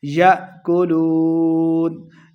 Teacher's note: یا کے ساتھ حمزہ ساکن ہے، اس کو جھٹکے کے ساتھ پڑھنا ہے